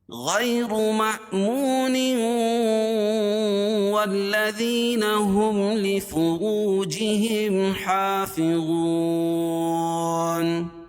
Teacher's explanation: تو ادغام ہوگا لیکن غنہ کے ساتھ۔ والذین، والذین، واو کو لام میں سختی کے ساتھ ملائیں گے، کیونکہ لام کے اوپر تشدید ہے، اور تشدید والا حرف دو مرتبہ پڑھا جاتا ہے اور سختی کے ساتھ۔ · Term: ادغام مع الغنہ